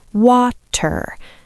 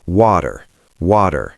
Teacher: My tongue just taps the roof of my mouth very quickly. It doesn't stop the air, it just flaps against the roof. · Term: American flap T